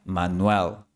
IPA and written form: ma'nwəɫ (Manuel)